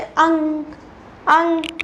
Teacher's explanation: आप चाहे बोल के देख लेना किसी वर्ण को, जो ऐसा हो जैसे अंग ऐसे बोल के देखना, तो आपकी जो वायु है वो केवल नाक से होकर निकलती है। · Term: अनुस्वार